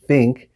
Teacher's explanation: instead of putting their tongue in between their teeth, think, they just say more of an S sound and say sink